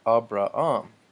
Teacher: I noticed there's no H sound in Greek